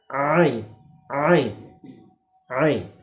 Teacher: عین کا مخرج گلے کا درمیانی حصہ ہے